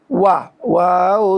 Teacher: দুই ঠোঁটের মাঝখানের ফাঁক থেকে পড়তে হয়